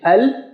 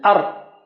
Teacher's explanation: Al and ar, both of them are the same. Both of them use the tongue tip.